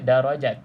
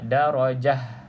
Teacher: Tetapi kalau ta bulat kita baca seperti Huruf ha